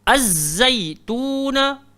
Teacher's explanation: So zai dekat situ kita kena desir.